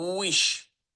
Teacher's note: Daha çox u-ya kimi u kimi oxuyuruq və dodaqlarımızı birləşdirmirik.